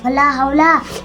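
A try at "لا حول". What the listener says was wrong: वाव नहीं है, ला हौला।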